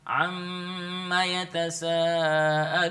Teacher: Am, tahan di situ, mimnya bertasydid. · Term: gunnah